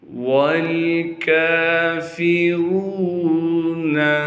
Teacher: را پر پیش ہونے کی وجہ سے را کو موٹا کر کے پڑھیں گے اور را کو آگے واو مدہ سے ملائیں گے۔